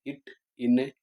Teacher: நாக்கின் நுனி வளைந்து மேல்வாயின் அடியை பொருந்துவதால் பிறக்கும்.